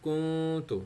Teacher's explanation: نون کو پاز کر کے ناک سے آواز نکالنی ہے، اپنے اخفا کرنا ہے